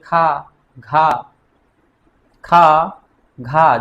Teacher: महाप्राण में जिनके उच्चारण में अधिक स्वास निकलती है। यानी कि जब हम कोई भी वर्ण का उच्चारण करें अधिक मात्रा में हवा बाहर निकले तो उसे हम महाप्राण कहेंगे · जैसे खा, घा, खा, घा, जब उच्चारण मित्रों हम कर रहे हैं तो हवा हमारे मुख से अधिक निकल रही, अधिक श्वास निकलता है